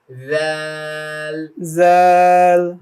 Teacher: হ্যাঁ, তোমার জিহ্বার আগাটা কোথায় লাগবে বলো? সামনের দাঁতের আগার সঙ্গে লাগবে, জিহ্বা বের হবে না, ভিতর থেকেই লাগবে।